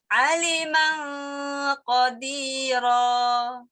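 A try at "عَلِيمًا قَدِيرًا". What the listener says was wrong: Ini lamnya juga panjang dong, sayang.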